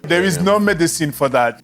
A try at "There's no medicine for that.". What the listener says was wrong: This is really a syllable timed rhythm. I would say there's no medicine for that. There's no medicine for that.